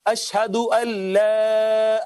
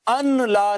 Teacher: نون کا لام میں ادغام کرتے ہیں, وہ اس وجہ سے پڑھتے ہیں اشہدو اللہ, اللہ پڑھتے ہیں, ان لا نہیں پڑھتے.